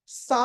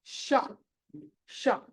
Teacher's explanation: ఇక్కడి నుంచి షా అని మీకు కదులుతున్నప్పుడు తెలుస్తుంది. షా అని నాలుక మీకు పైన అంటుకుంటుంది, రెండు పక్కన పైన, పూర్తి పైన కాదు, పక్కన కొంచెం పైన.